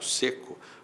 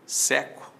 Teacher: Seco tem timbre fechado, seco tem timbre aberto.